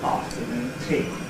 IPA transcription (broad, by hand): ˈɑːftənuːn ˈtiː